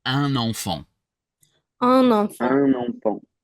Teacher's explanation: I'm creating an extra N basically.